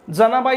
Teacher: जनाबाई या शब्दातील ज चा उच्चार कोणता ठीक आहे मग हा कोणता आहे तर दंत तालव्य आहे